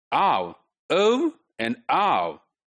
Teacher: we are starting with aa vowel but then there is a glide within this